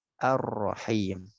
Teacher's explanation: Ar-Rahim disebut idgham kamil karena rohnya langsung masuk, tidak disebut, tidak dibaca Al-Rahim tapi dibaca Ar-Rahim.